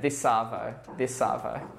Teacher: we shorten afternoon to avo and then we connect the s from this on to avo